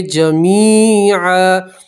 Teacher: وقف کریں گے تو دو زبر کی تنوین کو الف اور زبر سے بدلیں گے · کو الف اور زبر سے بدلیں گے، تو پڑھیں گے جمیعا، یا مدہ اس لیے ایک الف کے برابر کھینچیں گے